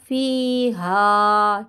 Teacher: مسلمۃ لا شیۃ فیہا، ٹھیک ہے، یا مدہ الف مدہ کو ہلکا سا کھینچتے ہوئے رکیں گے